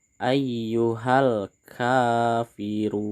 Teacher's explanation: pada kata run ini di sini kita harus membacanya panjang 6 harokat, bisa juga 4 dan juga bisa 2 harokat. Dan mad ini disebut dengan mad arid lisukun.